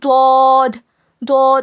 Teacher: पूरा मुंह भर के पढ़ना है और लास्ट में द जैसी आवाज आना